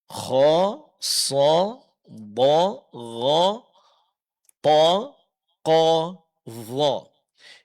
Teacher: terangkatnya pangkal lidah ke langit-langit ya di saat mengucapkan huruf yang tujuh · vokal suara hurufnya ketika dia berbaris fathah itu berbunyi O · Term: sifat istilla, huruf-huruf tebal